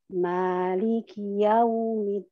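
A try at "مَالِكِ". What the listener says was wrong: Kaknya hati-hati. Kaknya hati-hati. Tidak boleh dihamaskan. Tidak dikeluarkan nafasnya. Maliki. Ki. Bukan ki. Ki. Ki. Maliki. Ki.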